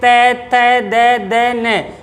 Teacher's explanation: हमारी जीभ कहाँ टच करेगी? दांतों के पीछे, ऊपर के दांतों के जड़ों में, तो वो उच्चारण स्थान हो जाएगा तय वर्ग का।